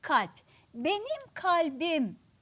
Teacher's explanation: yani değişime uğrar O halde Burada da ne var ünsüz değişimi Çünkü neye dönüştü arkadaşlar p sesi dizimizde B'ye dönüştü yumuşayarak